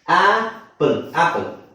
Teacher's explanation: ನಾವು ಈ ಅಕ್ಷರವನ್ನು ಹೇಳಿದ್ನಲ್ಲ ಇದನ್ನ ಆಪಲ್ ಇದನ್ನ ತೋರಿಸ್ತೀನಿ ಒಂದು ನಿಮಿಷ ಇಲ್ನೋಡಿ ಇಲ್ಲಿ ಏನಿದೆ ಶಬ್ದ ಎ ಅಂತಿಲ್ಲ ಆ ಅಂತಿದೆ